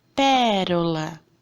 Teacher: E na última lacuna, nós vamos colocar as palavras proparoxítonas, tá bom? Que é a antepenúltima sílaba forte, a antepenúltima sílaba tônica.